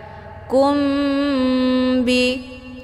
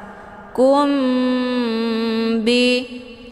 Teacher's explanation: sukun bertemu dengan huruf ba itu dinamakan Ikfa Syafawi cara bacanya mimnya ditekan kemudian ditahan lebih kurang dua kali ketukan